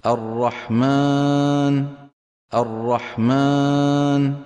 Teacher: عم يضغط على أنفه فعم يطلع صوت الألف مخلوط بغنة